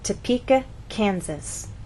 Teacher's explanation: we stress the middle part of the word, Topeka, and here the first part, Kansas. It's important to know where to place that stress because if it's moved to the incorrect place, other vowel sounds change. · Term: word stress